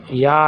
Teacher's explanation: वैसे तो यह अंतस्थ व्यंजन है और अंतस्थ व्यंजन के साथ साथ स्पर्श स्थान के अनुसार ये तालु वर्ग भी है, तालु में भी आता है।